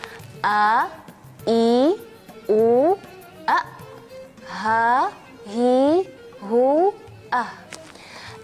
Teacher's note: huruf-huruf ini keluar dari bagian tenggorokan, bagian akhir tenggorokan atau bawah tenggorokan